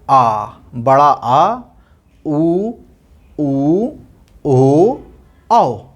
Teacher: पश्च स्वर मतलब कि जो जिह्वा के पिछले हुए भाग से उत्पन्न होता है